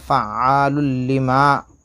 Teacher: اور 2 پیش کی تنوین کے بعد لام ہے تو ادغام بلا غنہ ہوگا، بغیر ناک میں آواز دے جا پڑھیں گے